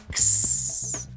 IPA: ks